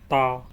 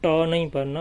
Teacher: تا یہ زبان کی نوک کو اوپر کے دانتوں کی جڑ پہ لگانے سے ادا ہوگا